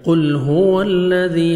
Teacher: قل هو الذی، ہاں پڑھیں گے، واو پہ لپس کو راؤنڈ میں لے کے جائیں گے. ذال نرمی سے ادا کر کے 1 سیکنڈ آپ نے اس کو کھینچنا ہے